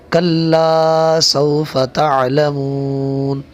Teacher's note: یہ کلا کو تھوڑا سا کھینچ کر لمبا کر کے پڑھنا ہے۔ کلا سوف، فا کو نہیں کھینچنا۔